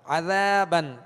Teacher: ذال کو نرمی کے ساتھ پڑھیں گے, ذال کے ساتھ الف مدہ ہے لہذا ایک الف کی مقدار کھینچ کر ادا کریں گے